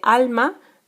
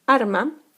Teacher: rotacismo, cuando decimos en vez de alma, arma